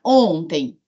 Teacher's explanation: esse M final vira um I nasal Então continua sendo um ditongo